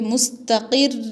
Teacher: रा को सख्त आवाज़ से पढ़ेंगे और वक्फ भी करेंगे